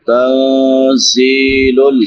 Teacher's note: دوسری آیت تنزیل نون ساکن کے بعد حروف اخفا میں سے زا ہے تو یہاں پہ اخفا کریں گے. زا سیٹی والے حروف میں سے ہے. 3 حروف جو سیٹی کے ساتھ ادا ہوتے ہیں زا سین صاد.